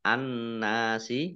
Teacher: masuk ke huruf berikutnya yaitu Nun ditandai dengan nunnya ada tasdidnya Nun tasdid dibaca mendengung ditahan dua harakat